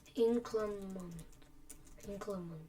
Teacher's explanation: inclement is the stress on the first syllable